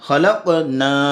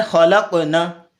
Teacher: اب دیکھیں نون کے ساتھ الف جڑا ہوا ہے اور نون کو تھوڑا سا لمبا کرنا ہوگا، خلقنا اتنا لمبا، ہم نے پیدا کیا.